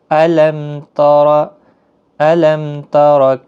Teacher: اظہار کا معنی ہوتا ہے ظاہر کرنا، یعنی میم ساکن کو ہم ظاہر کر کے پڑھیں گے